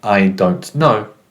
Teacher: the rising intonation on no indicates a question